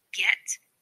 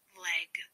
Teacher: The g is a voiced stop consonant. The sound for g is g, as in the beginning of get and the end of leg.